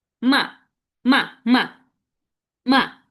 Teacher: এই ফলিং টোনটা বলার সময় এরকম, মা, মা, মা, মা। ফলিং টোন, মনে হয় যেন এই শব্দটা কি নিচে পড়তেছে, এরকম আমরা একটু ধাক্কা দিয়ে বলবো মা মা।